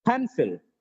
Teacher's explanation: But in pencil, pen is stressed, sil is unstressed. The pronunciation of this word is not just pencil, it is pencil.